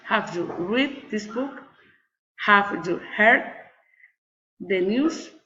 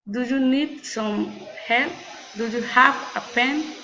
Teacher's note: General question, rising intonation.